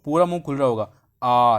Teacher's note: विवृत स्वर क्या होते हैं, विवृत स्वर को बोलने पर मुंह हमारा बहुत ज़्यादा खुलता है